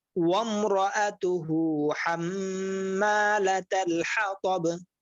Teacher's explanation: হাম গুণা আছে, হ্যাঁ হাম এবং মা টান আছে।